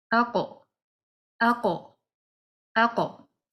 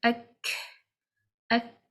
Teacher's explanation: So these are the two these are the comparisons between the two letters, to understand that even though both the letters come from the back of the tongue, qaf a little further back, and what lies opposite to it is the soft palate